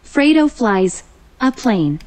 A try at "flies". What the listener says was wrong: 자꾸 이런 거는 소리를 안 내는 경향이 있는데 flies. I가 I 돼서 fly인데 뒤에 있으니까 flies. Fredo flies.